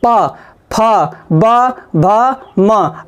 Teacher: अगर ओंठों की सहायता से जिसकी ध्वनि निकलेगी वो कौन से व्यंजन कहलाएंगे, ओष्ठ व्यंजन कहलाएंगे। देखिए पा, फा, बा, भा, मा।